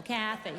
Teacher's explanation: So the emphasis is on the first syllable, Kathy. Okay.